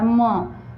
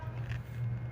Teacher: ओष्ठ और नासिका के संयोग से एक वर्ड बोला जाता है म